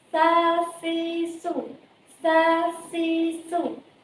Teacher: makhrajnya terletak pada lidah depan